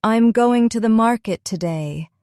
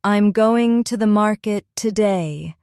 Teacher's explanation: Notice how the strong beats are on going, market, and today. The smaller words flow quickly between them.